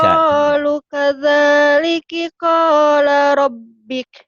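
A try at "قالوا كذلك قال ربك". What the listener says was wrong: Kau sama lu panjangnya sama. Qalu qalu kadzaliki qala rabbuk. Qalu qalu sama. Kok sama lu panjangnya sama, yuk.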